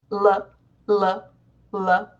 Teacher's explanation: So in most languages, we have one type of L, which is a sound that you create by placing the tip of your tongue just behind your upper teeth